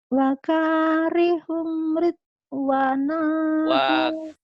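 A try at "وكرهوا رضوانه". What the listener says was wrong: Wakarihu bukan wakarihum. Wakarihu.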